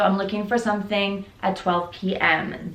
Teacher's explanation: The intonation is going down to confirm and to say that you're looking for this specific time.